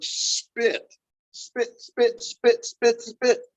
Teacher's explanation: You get no puff of air, right?